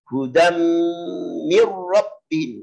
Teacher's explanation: Hudam lama, tanwin ketemu mim.